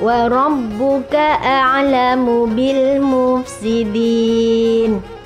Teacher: Ada alif lam di sini, alnya terbaca jelas karena bertemu dengan mim. Ini bacaannya adalah izhar qamariyah.